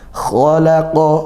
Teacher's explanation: kha tebal, makhrajnya dari tenggorokan atas gitu ya, didesiskan, dialirkan nafasnya juga. Khalaqa, qafnya juga tebal.